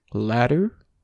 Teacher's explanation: japanese r is rather the opposite of the english are it's made by a light flick of the tip of the tongue on the roof of the mouth · word ladder normally and pay close attention to that middle consonant see how your tongue just brushes uh the top of your mouth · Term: the japanese r